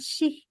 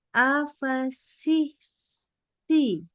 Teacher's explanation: kalau baca sin itu sebenarnya kayak giginya tuh rapat. Nah, lidahnya ke bawah. Si, ada desisnya jadi.